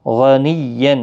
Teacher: غائن مستعلیہ ہے، پر پڑھا جائے گا